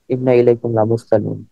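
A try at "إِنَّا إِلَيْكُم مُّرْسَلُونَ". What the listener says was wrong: এখানে মুরসালুন। প্রথমটা মুরসালুন, তারপরেরটা লা মুরসালুন।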